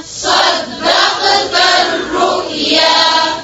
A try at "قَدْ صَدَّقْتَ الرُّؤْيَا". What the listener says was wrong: दाल को नहीं मोटा करें। फिर से पढ़ें। قد